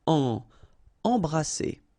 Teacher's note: Alright, EM here, and then you've got a consonant after, so you get the nasal en. So you don't hear any M, it's really in your nose.